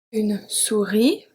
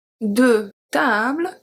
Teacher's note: the S at the end is not pronounced